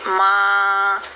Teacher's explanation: लेकिन इख्फा में जैसे हम कहेंगे माँ, तो माँ कहते हुए नून तो हम पढ़ रहे हैं लेकिन उसकी साउंड टोटली नोज़ में ले गए हैं और ज़बान को यूज़ नहीं किया